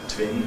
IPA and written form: tvɪn (twin)